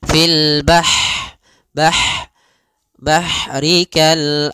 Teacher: dia punya sifat Hames mengalirnya nafas